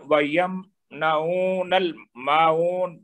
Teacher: وَيَمْنَعُونَ، اور نون کو اگر آگے حمزہ واصل ہے اس وجہ سے لام سے ملا کر وَيَمْنَعُونَ الْمَاعُونَ میم پر ایک حرکت ہے، آگے الف مد ہے تو اس کو 2 حرکت دیں گے. اور پھر واو مد ہے، نون پر ایک حرکت ہے لیکن جب اس کو ساکن کریں گے تو یہ مد عارض بن جائے گی.